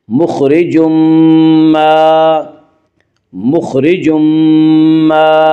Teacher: یہاں تنوین کے بعد یومنو کے 4 حرفوں میں سے میم آ رہا ہے، اس لیے یہاں پہ ادغام مع الغنہ ہوگا